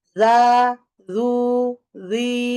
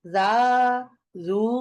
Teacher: মাদ সবাই সমান পড়বো, ফ্ল্যাট, মনোটোনাস টোনে মাদ করবো, হ্যাঁ, যা, জু এরকম যেন না হয়, হ্যাঁ, ফ্ল্যাট।